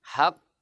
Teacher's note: pantulan terakhir tetap sama. Yang membedakan adalah tekanan sebelum huruf itu dipantul. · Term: qalqalah